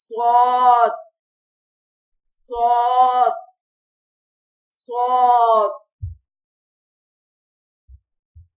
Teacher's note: جب زبان کی نوک اوپر اور نیچے کے دو دانتوں کے کنارے سے لگے تو صاد ادا ہوتا ہے۔ موٹا پڑھا جائے گا، سختی کے ساتھ پڑھا جائے گا، سیٹی کی آواز آئے گی۔